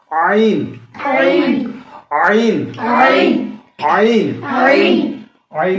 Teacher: عین کا مخرج کیا ہے وسط حلق یعنی حلق کا درمیانی حصہ